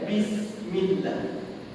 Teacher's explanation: Kesalahan dia kerana tuan-tuan, huruf sin dekat situ adalah safir. Maksud safir ni tuan-tuan, bunyi dia seakan-akan bunyi binatang pada huruf sin.